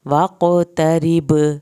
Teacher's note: را پتلا پڑا جائے گا کیونکہ را کے نیچے زیر ہے